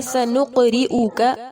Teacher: قاف پر قلقلہ اور را مرقق ہوگا